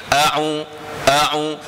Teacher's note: Hamzah di belakang sekali, ain tengah-tengah halkum.